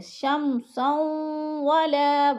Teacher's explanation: ولا پہ الف مدہ ہے، اس کو بھی ہم نے تھوڑا سا کھینچ کر پڑھنا ہے